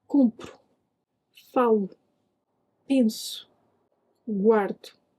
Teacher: Do you hear how that final o is much quieter?